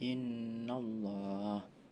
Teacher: terdapat nun bertasydid dibaca dengung, dan ada takhrim karena lafal Allah didahului fathah. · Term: gunah